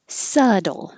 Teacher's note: There's no B sound at all. And the T sounds like a D